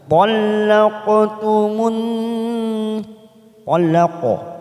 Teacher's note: ada huruf qaf sukun namanya qalqalah sugro biasanya warna biru tua. Kita pantulkan. Talaqtumun masuk pada huruf nun yang bertasdid warna pink namanya bacaan gunnah.